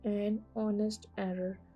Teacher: The first letter of the words honest and hour is a consonant, but it's unpronounced. In spite of its spelling, the word began with a vowel sound.